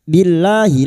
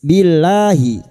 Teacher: lam jalalah yang didahului kasrah kita baca tarkik tipis